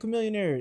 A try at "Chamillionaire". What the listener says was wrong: No, his name is Chamillionaire. I know how it's spelled, babe. It's not your millionaire. It's chameleonaire.